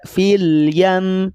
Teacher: Namun fil yam dipegang selama dua harakat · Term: ghunnah